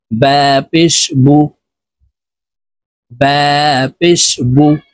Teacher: ঠোঁট গোল করে তাড়াতাড়ি করে উচ্চারণ করব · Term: পেশ হরকত